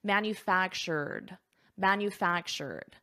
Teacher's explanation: So here we have the ED, so let's focus on the pronunciation. I have my R, manufactured, and then I add a soft D